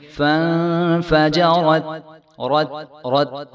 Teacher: را موٹا حروف ہے اور تا باریک ہے، تو را کو موٹا کریں گے اور بعد میں جو ہے فوراً ہی تا کو ہم باریک